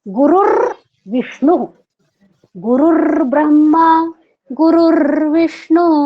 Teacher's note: तो गुरुर ब्रह्मा फिर गुरुर सब जगह र संकुचित है